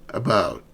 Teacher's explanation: Your tongue is relaxed and it's in the mid-central position. So it's a very soft about. It's not very distinct.